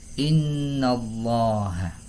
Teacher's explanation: Maka cara membaca lafaz Allah dalam ayat ini yakni dibaca dengan tafkhim atau tebal.